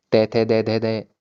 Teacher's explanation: दंत का यूज, और हमारी जो जीभ है वो दांतों पर टच हो रही है।